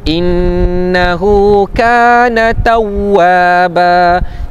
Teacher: Nun yang bersabdu, hukum dia apa? Wajibul gunnah, kena dengungkan bacaan.